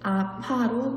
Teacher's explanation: 아프다의 아프 어간 끝소리 의에 아로 시작하는 어미가 결합할 경우 으가 탈락된 형태로 아파로 발음하는 것이 맞습니다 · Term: 의탈락